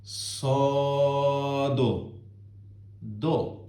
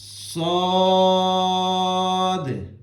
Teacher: اس کے لاسٹ پہ، اس کے اینڈ پہ دال آتا ہے، اور دال کے اوپر آپ نے قلقلہ بھی کرنا ہے، جھٹکا دینا ہے تھوڑا سا، اور اس کو آخر پہ دال کو یوں کر کے نہیں پڑھنا ہے، سو دو، یہ والا ساؤنڈ آپ نے نہیں نکالنا ہے، صاد۔